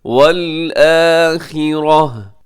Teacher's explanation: یہاں پہ وقف کریں گے تو گول تا کو ہا کے ساتھ بدل دیں گے